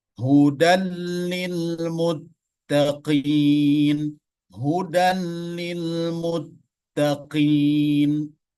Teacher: idghamnya adalah bila gunnah, tanpa gunnah dan tanpa dengung, maka hanya dimasukkan saja.